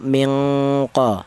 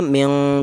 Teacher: Maka bunyi yang dihasilkan dari pertemuan dua huruf ini yaitu bunyinya ng jadi dengung yang lebih kuat. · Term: ifa ab'ad